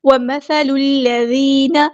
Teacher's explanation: لام کو ہم نے لام کے ساتھ ملا دینا ہے، حمزۃ الوصل ہمارا ڈراپ ہو جائے گا، وال باریک نرمی سے پڑھیں گے۔